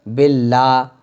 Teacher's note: یہ لفظ اللہ کے لام سے پہلے زیر آ رہا ہے تو اللہ کے لام کو ہم باریک پڑھیں گے، باللہ ہے نا، اگر پر پڑھنا ہوتا تو ہم باللہ پڑھتے، لیکن یہ باریک ہے، یہاں پہ بھی بسم اللہ میں لام باریک ہے کیونکہ اللہ کے لام سے پہلے زیر ہے۔